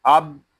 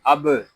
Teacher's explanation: با ساکن ہے، اس میں خوب قلقلہ ظاہر کریں گے، اس کو اب اس طرح نہیں پڑھیں گے، اس کو پڑھیں گے اب۔